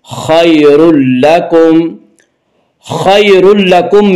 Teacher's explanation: یالین وہ یا جو ساکن ہو اس سے پہلے زبر ہو، یالین کو نرم آواز کے ساتھ جلدی پڑھیں گے · اور یہاں تنوین کے بعد لام آ رہا ہے اس لیے یہاں پہ ادغام بلا غنہ ہوگا